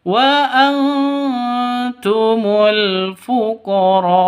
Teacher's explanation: Maka panjang 5 ketukan karena mad wajib muttasil. Hamzahnya disukunkan karena waqaf seperti itu.